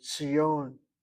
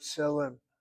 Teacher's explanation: The Tzadi letter is a TS sound, not a T, not TZ, not TZ at all.